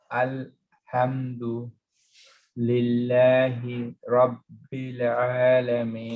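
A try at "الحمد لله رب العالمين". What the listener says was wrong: Pause on the Rabbil as well. So you're pausing for 1.5 seconds. Pause for half a second. So Alhamdu, no pause, right? Alhamdulillahi Rabbil Alameen.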